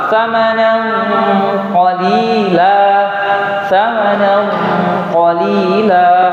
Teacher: Maka pada saat itu juga ikhwah sekalian, ikhfa yang kita baca harus juga ikut tebal